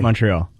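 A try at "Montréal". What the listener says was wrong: No, now you're kind of glazing over the beginning. He's like Montreal. You say Montreal. So it's Montreal.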